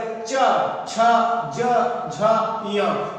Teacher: अगला है क्या है, अब चा वर्ग च छ ज झ य, चा वर्ग के जितने भी ये पांचों वर्ण हैं इनको बोलने में क्या होता है कि जीभ जो होती है वो सीधा और सीधा तालु को छूती है, यानी कि मुंह में छत को छूती है